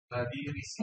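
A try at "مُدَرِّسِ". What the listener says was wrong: Mudarrisi. Ro-nya ditekan.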